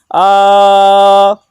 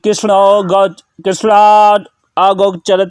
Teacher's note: यहाँ जो कृष्णा में आप जोर से खींच रहे हैं वही प्लुत है, वही 2 मात्रा से अधिक समय अर्थात 3 मात्रा का समय लग रहा है, इसलिए इसे प्लुत स्वर कहते हैं।